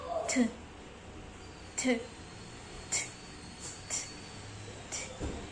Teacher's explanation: The place and form of articulation is alveolar occlusive.